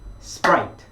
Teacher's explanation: 우리 발음교를 살펴보기 위해서 단어를 찾아서 발음교를 살펴보면 그 발음교 안에 모음의 개수가 거의 음절이라고 생각을 하시면 되거든요. 그러면 여기 보시면 이 sprite라는 단어는 모음이 이중모음 하나만 있죠. 그래서 이거는 1음절의 소리입니다.